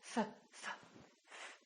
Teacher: this GH is actually an F sound right f f f there's no vibration in my vocal cords so the f is actually a voiceless sound